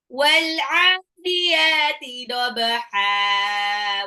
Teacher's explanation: Wal'adiyati itu ada alif lam koma ria, ain sama ya-nya 2 harokat matobai dobaha, ba-nya qalqalah, huruf ba sukun dipantulkan, ha-nya itu dibaca ha bukan han karena dia mad iwad.